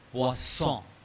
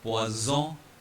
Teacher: and a single S will have a buzzing Z sound